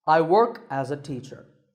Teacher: this is a falling tone because notice how my voice goes down in pitch at the end